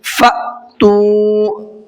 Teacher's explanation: حمزہ ساکنہ کے پڑھنے میں جھٹکا ہوتا ہے، تو یہ حمزہ ساکنہ ہے اس لیے اس کو جھٹکے سے پڑھیں گے۔